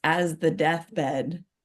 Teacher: as gets a little more stress, whereas the is not stressed at all. It's boom, boom, boom.